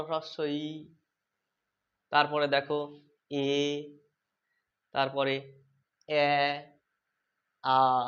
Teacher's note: ঠোঁটটা আস্তে আস্তে কি বলতো? প্রসারিত হচ্ছে। দেখো ই, এ, এ, আ, আস্তে আস্তে প্রসারিত হচ্ছে। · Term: প্রসারিত স্বর